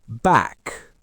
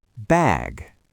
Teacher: Listen to how much longer that A sound just became. Bag. I'm stretching it out.